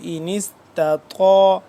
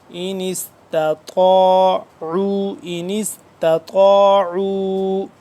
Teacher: تا ہوتا ہے باریک طا ہوتا ہے موٹا